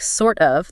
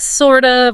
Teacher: They pronounce the R sound clearly, often with a little roll or a tap, depending on the specific accent. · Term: rhotic